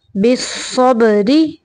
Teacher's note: صاد زبر با صب، بالصب، را زیر ری، بالصبری۔ یہاں پہ را کو باریک پڑھیں گے کیونکہ را کے نچلے حرف کے یعنی را کے نیچے زیر ہے